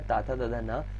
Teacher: ता वर्ग जो हमारा होता है ता था दधा ना, ये हमारा कहाँ से आता है, दंत से आता है